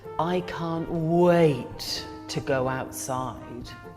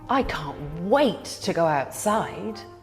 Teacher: way that you can tell when people are being sarcastic is they often use a different intonation falling rather than the rising tone people usually use when they're happy or excited